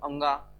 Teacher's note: नाक से भी निकलेगा और मुंह से भी निकलेगा। ठीक है, माँ बोल के देखो तो नाक और मुंह दोनों से हवा निकलता है। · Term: अनुनासिक वर्ण